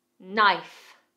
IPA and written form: naɪf (Knife)